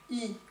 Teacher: Le I, sa particularité, comme nous l'avons vu, c'est qu'il va aller un peu vers l'avant.